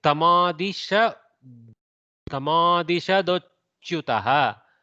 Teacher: Takara changes to a soft dakara.